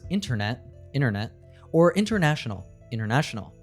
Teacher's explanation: In English, when we have an N and T together, we often drop the T sound, like in the words internet, internet, or international, international.